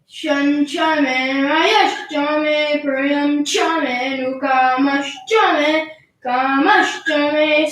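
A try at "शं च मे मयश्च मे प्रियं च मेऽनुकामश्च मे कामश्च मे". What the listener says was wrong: Again, you also made the same mistake of what he did. Like the first May was Udata. You were a little fast. Slightly.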